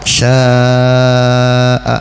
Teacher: Sya'a berarti mad wajib muttasil ya, panjangnya 3 alif 6 harokat. Sya'a bukan sya'u ya.